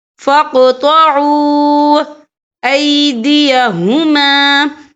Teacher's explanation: یہ دیکھیں فَاقْطَعُوا، یہاں پہ واو مدہ بھی ہو رہا ہے، واو ساکن ہے، واو ساکن سے پہلے پیش ہے، اور اس پر چھوٹی سی مد بھی ہے، تو ہم یہاں 3 یا 4 کر کے برابر کھینچ کے پڑھیں گے